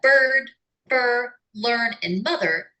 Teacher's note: English is one of very few languages, along with Mandarin Chinese, that uses the rhotic sound like a vowel. In words like bird, fur, learn, and mother, the sound is the nucleus of the syllable.